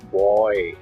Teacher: So boy, देखिए जब आप boy बोलेंगे तो ब से स्टार्ट हो रहा boy, O and Y, और इसमें Y भी है, W और Y वो सेमी वॉवल साउंड है, तो O का साउंड जो है ग्लाइड कर रहा है Y में, boy। यहाँ पे ये डिप्थोंग की कैटेगरी में आएगा। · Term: diphthongs